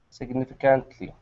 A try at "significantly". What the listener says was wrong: Look where the stress is. No, you're putting it on the can't. It's not on the can't. That little, I don't know if you can see it. There's a little mark before the and, high up. There's a little apostrophe. That shows you that the stress is on It's on the nif.